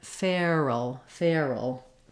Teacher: Fair you'll see it in the IPA being the air diphthong we're gliding from a kind of an a position into our ER